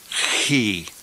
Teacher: it's always a hard sound and I pronounce it further back in the throat with more of a guttural sound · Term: key